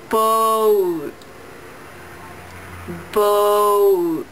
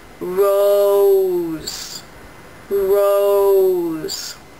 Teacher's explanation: This diphthong starts more open: [o] And gets smaller